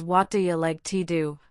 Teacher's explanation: do you blending into dya and to do sounding like tu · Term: connected speech